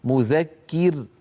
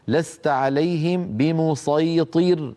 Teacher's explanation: لا بد من ترقيق هذه الراء لانها ساكنه وقبلها مكسور